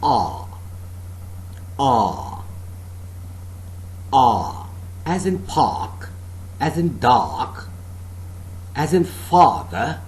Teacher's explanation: made between the rims of the tongue and the upper molars the jaws are considerably separated and the lips are neutrally open the tongue tip is behind the lower teeth · A part of the tongue between the center and the back is in the fully open position, no contact being made between the rims of the tongue and the upper molars.